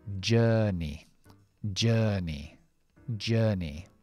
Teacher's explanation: Y todo esto aquí es schwa larga. Empleamos la R si queremos el acento estadounidense. Terminando con la I larga acortada. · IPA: /dʒɜːʳni/